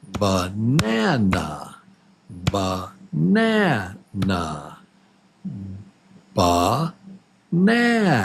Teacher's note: there are 3 beats in banana, 3 claps. Banana, banana, and number 2, syllable number 2 is the strong syllable.